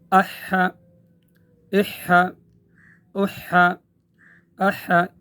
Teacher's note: گلے کے درمیان سے ادا کرنا ہے تو ایک قسم کی ہوا کی آواز آئے گی